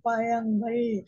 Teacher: பார்த்தீங்கன்னா ர் எ ல் அதாவது நம்ம சாதாரணமா சொல்லுவோம் பார்த்தீங்கன்னா பழங்கள் அந்த நாக்கை மடிச்சுக்கிட்டு வளைஞ்சு கூட சொல்லுவோம்